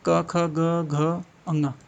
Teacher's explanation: क वर्ग क्या है क ख ग घ अ ङ कंठ से आता है